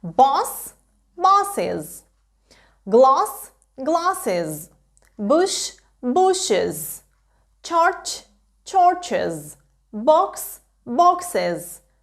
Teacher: закінчення is буде вимовлятися як із